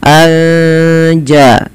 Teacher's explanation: Cara membacanya menyamarkan suara nunnya kepada huruf ja anja sambil ditahan dua harakat. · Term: ikhfa hakiki